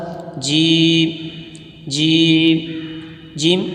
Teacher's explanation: जीम जबान के दरमियान और ऊपर के तालू के दरमियान से अदा होता है · زبان کے درمیان اور اوپر کے تالو کے درمیان سے ادا ہوتا ہے